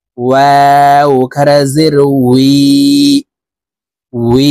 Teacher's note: ওয়ার উচ্চারণ ঠোঁট গোল করে দুই ঠোঁটের মাঝে ফাঁকা রেখে উচ্চারণ করতে হবে।